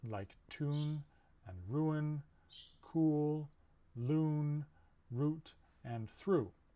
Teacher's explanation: a high back rounded vowel and it's the tense member of the pair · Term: oo sound